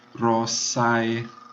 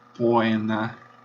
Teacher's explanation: Então, o ditongo AE e o ditongo OE, que nas pronúncias tradicionais eles se juntam num monotongo, como se fosse só a letra E. Em latim, eles soam exatamente AE, OE, como um ditongo.